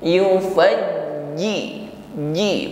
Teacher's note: ketika menekan huruf Jim tidak ada desis tidak ada nafas yang menyertainya sifatnya syidah jahr tertahan udara jadi tidak diucapkan yufaji yufaji tidak